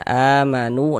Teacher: Oh, ini namanya mad badal dah gitu. Amanu panjang dua harakat ya. Amanu nu dibaca panjang.